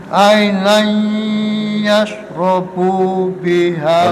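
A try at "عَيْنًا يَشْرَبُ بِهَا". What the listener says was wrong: Loh, bunyinya pendek. Ainai yashrabu bi. Ngaten mawon. Loh, bunyinya mboten pareng ngoten. Pun yashrabu bihal kepanjangan itu. Ainai yashrabu bihal.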